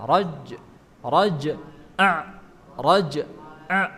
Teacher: huruf jim itu kan qalqalah mantulan